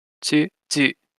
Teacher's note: when T or D, ta or da are combined with U, they become tsu and zu